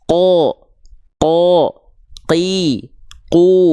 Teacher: ketika fathah dibaca dengan vokal Seperti O karena dia Huruf tebal pangkal lidahnya naik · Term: huruf yang tebal